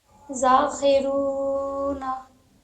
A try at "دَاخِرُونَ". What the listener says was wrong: زال نہیں ہے دال ہے داخیرون خا جو ہے نا خا زیر خی